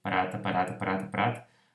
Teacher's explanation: eu emito, sai um elemento vocálico, que é justamente aquele da vogal seguinte